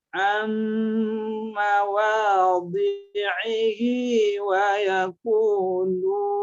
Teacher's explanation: Jadi sisi tepi lidah kita kiri kanan, kemudian kita dorong ke geraham, bertemu dengan geraham atas, itu dirapatkan geraham atas.